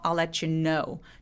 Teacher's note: I'll let you 너무 세게 하지 말고 I'll let you know. know에다 강세를 주시면 돼요. 왜냐면 know가 이 문장에서 가장 중요한 단어니까요.